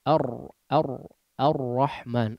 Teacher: mengalirnya sedikit suara saat mengucapkan huruf ra-nya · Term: tawassut